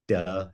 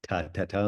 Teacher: D is vibrated, T is not.